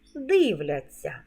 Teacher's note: вимовляємо ться як ця м'який подовжений звук